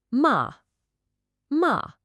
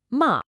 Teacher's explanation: start the sound ma at the absolute top of your vocal range. Then, drop it sharply, decisively, just like you're saying nope. And make sure you land at the very bottom of your range. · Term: assertive tone